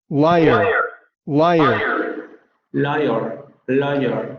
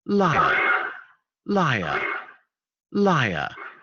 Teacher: la vocal se articula en la zona donde articularíamos la vibrante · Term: vocal rótica